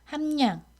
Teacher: 리을이 미음 뒤에서 니은으로 바뀌었습니다